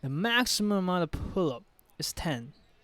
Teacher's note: Now 10 is stressed because it is the keyword here.